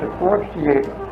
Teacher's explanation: he clearly is dropping the R